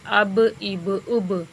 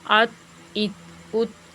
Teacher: یہ چونکہ حروف قلقلہ میں سے ہے با تو اس کو ہلا کر ہی پڑھیں گے